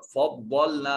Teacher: فضلنا میں ضاد کو مفخم پڑھا جائے گا۔ یہ خصہ ضغطن قذ میں سے حروف مستعلیہ میں سے ہے۔